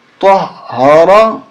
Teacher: طا موٹا ہوگا را بھی موٹا ہوگا اور طا کو ہا کے ساتھ ملاتے ہوئے ہا پہ زور دیں گے. ہا پہ تشدید ہے طہارا.